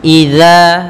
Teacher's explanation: Dza juga hati-hati jangan sampai terbaca dengan za tapi dia dzal ya huruf dzal maka dza ujung lidah menempel dengan gigi sari kita